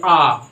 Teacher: जैसे अगर हम अ बोलेंगे, अगर हम अ बोले, अगर हम छोटा अ का उच्चारण करें तो ज़्यादा दबाव नहीं है, लेकिन अगर हम बड़ा आ का उच्चारण करें तो अगर हम बड़ा आ का उच्चारण करेंगे, दीर्घ अ बोलेंगे, इसका मतलब हम दबाव ज़्यादा लगाते हैं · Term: कठोर स्वर